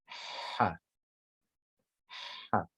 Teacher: this ha, it's deeper than an English H sound. It sounds more like an Arabic ha, for those of you who speak Arabic.